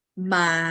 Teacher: Low tone doesn't go like this. It goes straight, but in a low pitch.